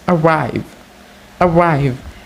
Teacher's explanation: It consists of two consonant sounds, that is voiced palato-alveolar approximants ra and voiced labiodental fricative va, and three vowel sounds, that is mid-central unrounded neutral vowel low back unrounded vowel a, and mid-height front unrounded vowel e.